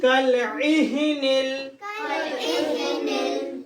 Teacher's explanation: Ain middle point of throat and ha bottom point of throat.